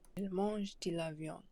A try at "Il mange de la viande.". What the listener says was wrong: Okay, and it also sounds like you're making the last syllable on viande silent, or the last consonant, sorry.